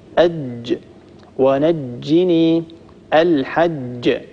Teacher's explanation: الجيم الفصيحة المنقولة إلينا عن رسول الله صلى الله عليه وآله وسلم هي جيم شديدة ينحبس فيها الصوت.